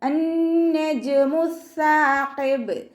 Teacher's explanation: അന്നജുമു സാഖിബ് സ ലൈറ്റ് ആക്കിയിട്ട് ഉച്ചരിക്കാൻ ശ്രദ്ധിക്കുക. നമ്മുടെ നാവിൻ്റെ അറ്റം മേലെ മുൻപല്ലിൻ്റെ അറ്റത്ത് കൊണ്ടുവച്ചിട്ട് കുറച്ച് എയർ പല്ലിൻ്റെ ഇടയിലൂടെ പുറത്തോട്ട് പോകുന്ന സൗണ്ടിൽ വേണം ഉച്ചരിക്കാൻ.